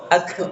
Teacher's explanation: Nah, tidak boleh, karena kof itu tidak memiliki sifat rokhwa, tidak memiliki sifat hams, tidak mengalir suaranya. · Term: syiddah